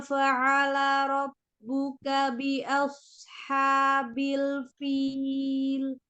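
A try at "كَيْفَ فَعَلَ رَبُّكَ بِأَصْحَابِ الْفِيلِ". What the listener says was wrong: Kenapa lama robuk dengan K-nya? Apa sinyalnya yang nyampenya lama, apa bacanya lama itu? Ya, robbuka bi as. Langsung, robbuka bi asha.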